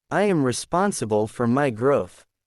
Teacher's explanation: Feel the tone drop at the end of each sentence. That drop creates authority.